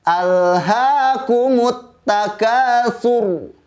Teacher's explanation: ada huruf ro dengan hukum tebal atau tafkhim